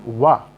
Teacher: वा वर्ण का जो है एकमात्र ऐसा वर्ण है जो दंत ओष्ठ से बोला जाता है